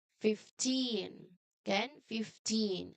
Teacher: Well, this is a tricky teen word because 5 changes to fifth, the first syllable. So the strong part here is the end. Teen.